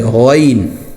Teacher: غین، غین بھی جو ہے موٹا ہوتا ہے اور حلق سے نکلتا ہے، اس کو گاف کی طرح گین نہیں پڑھنا بلکہ حلق سے غین